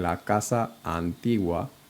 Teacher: the two A's are gonna flow together because the stress.